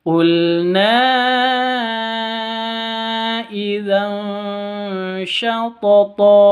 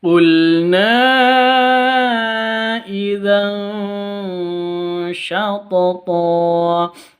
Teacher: Tanwin bertemu dengan shin. Cara bacanya samar. Terus didengungkan 2 ketuk, disertai samar, disertai dengung 2 ketuk. Jangan lupa siap-siap ke huruf ikhfa-nya karena ini ikhfa hakiki.